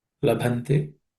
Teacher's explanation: the b is aspirated